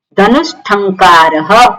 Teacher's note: દંત્ય સકાર છે એનો મૂર્ધન્ય સકાર થઈ જાય કેમ કારણ કે ઠ જે છે પાછળ આવ્યો છે એ મૂર્ધન્ય છે